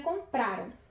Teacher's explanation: E como terminam em ram, a sílaba tônica é o pra. Então, no caso, ela é uma paroxítona.